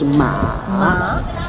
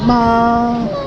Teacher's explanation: That's called low tone, ma. This one is high tone, ma.